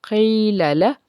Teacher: लाम को नरमी से, आगे दोबारा लाम है, लाम को फिर नरमी से